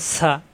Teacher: সফির হরফ সা, বাতাস বের হবে।